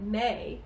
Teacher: May has two vowel sounds, eh plus ee.